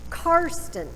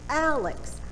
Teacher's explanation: I'm stressing the first syllable.